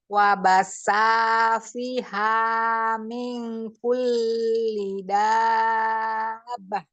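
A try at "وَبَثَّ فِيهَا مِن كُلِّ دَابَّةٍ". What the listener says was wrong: Nggak enak belakangnya ya. Gini nih, coba. Ming, itu dengungnya juga jangan lupa ya. Ming kulli dabbah. Harus tegas dong bahnya. Jadi jangan menghilang, nggak kedengeran.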